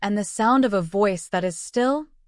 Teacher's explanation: features a pattern of two unstressed syllables followed by one stressed syllable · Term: anapest meter